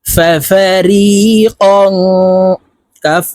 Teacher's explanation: ফাবর ফাফা র ইয়া জেরি ফাফারি কফ আলিফ দুই জবর কম তানভীনের পরে ইকফার হরফ কাফ আসছে তো এই কফকে নাকের ভিতরে লুকাইয়া গুন্নার সহিত পড়বো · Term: ইকফা গুন্না